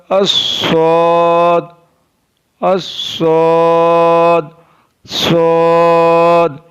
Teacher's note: Sod is pronounced from the tip of the tongue and the inner edges of both teeth.